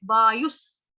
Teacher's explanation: वायु के आगे विसर्ग है, विसर्ग का उच्चारण होगा आधे स से, वायुस। यथाकाश स्थितो नित्यं, वायु सर्वत्र गो महान।